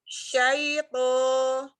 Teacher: Karena sanya kurang buka, kurang ke tengah. Ya, huruf shinnya kurang ke tengah lidahnya